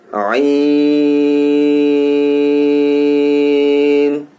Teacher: عین ہم جب پڑھیں گے تو حلق کے درمیانی حصے سے یہ ادا ہوتا ہے حرف. اس پہ بھی ہمیں زیادہ توجہ کی ضرورت ہے, اور ہم اس کو بھی 5 الف کھینچیں گے.